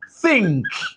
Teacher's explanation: this th is voiceless